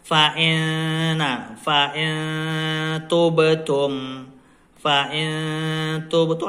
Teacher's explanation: Di hidung. Panjang sangaunya adalah 2 harakat atau 2 ketukan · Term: ikhfa hakiki